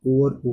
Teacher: आगे हम बात करें उ और ऊ की, तो इसको हम कहाँ से बोलते हैं, ओष्ठ से, यानी ओठ से